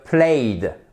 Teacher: Ce son est assez sourd par rapport à play, watch, son sourd, le ch, play, a, son sonore. Dans ce cas-là, le ed ne se prononce pas comme un te, mais comme un de, played. Parce que vous voyez bien, si j'essaie de faire plate, c'est plus dur.